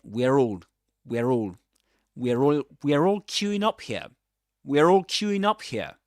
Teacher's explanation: it's a ra sound that appears to link, right? The end of one word with the beginning of the next one. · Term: linking ra